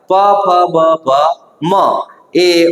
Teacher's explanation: બે હોઠ એકબીજાને અડીને સ્પર્શીને જે વર્ણોનું ઉચ્ચારણ થાય અથવા જેને બોલી શકાય તો તેવા વર્ણોને આપણે ઓષ્ઠીય વર્ણો કહેવાય